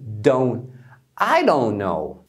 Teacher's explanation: é muito comum eles não pronunciarem o T